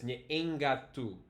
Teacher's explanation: the NG is going up into the E here, and that's nasalizing, and then the K is going to nasalize into an NG, right? So it's nyeengatu, and the NG is still coming. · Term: nasal environment